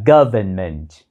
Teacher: Nhưng trong tiếng Anh Mỹ, chúng ta vẫn phát âm chữ n đó là government.